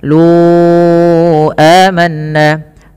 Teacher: panjangkan huruf lu sepanjang 4 harakat. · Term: mad jaiz munfasil